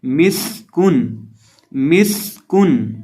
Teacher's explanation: ये जो मीम है ये तो सिंपल दोनों होंठों को मिलाने से पढ़ा जाता है और ये जो सीन है इसको हम सिटी पैदा करके पढ़ेंगे और काफ को बारीक पढ़ेंगे। मिस्कुन, मिस्कुन।